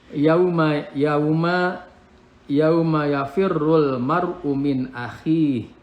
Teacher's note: Ini alif lam qamariyah ya, lamnya baca jelas